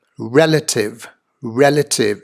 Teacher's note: the emphasis on the first syllable of this three syllable words a relative non-competitive native chief executive wear number 29 is to